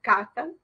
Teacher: after the plosion, you have a small interval, and then vocal folds start vibrating for the vowel